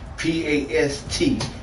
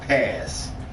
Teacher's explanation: I don't hear no T in the word.